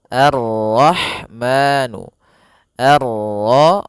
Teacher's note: Di sini ada alif lam syamsiyah yaitu alif lam yang ditulis tapi ia tidak dibaca sehingga kita langsung masuk ke huruf ro